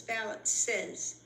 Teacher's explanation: Note, balance only added an S, not ES, but the ES on the end is still pronounced as a separate syllable because its ending sound of the basic word balance ends in an S sound.